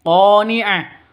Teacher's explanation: qo panjang dua ketukan karena ada alif diawali dengan fathah mad asli atau mad tha mad thabi'i.